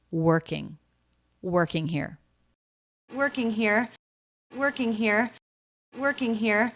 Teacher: This is how we do it in American English. This vowel doesn't really have a sound by itself. It just blends with the R. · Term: R vowel consonant combination